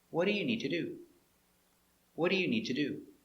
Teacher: it's an information question so the intonation goes down at the end